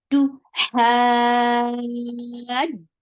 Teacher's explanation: Tu, for dhamma, circle your lips. The sound is very short and sharp, and you are circling your lips very well for dhamma